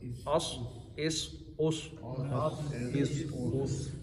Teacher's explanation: اگر سواد ہے اس کو موٹا پڑھنا ہے کیونکہ حروف مستعلیہ ہے